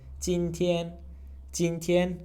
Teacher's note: Both of them are first tone.